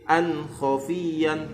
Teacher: tanwin bertemu kha dibaca jelas tanpa dengung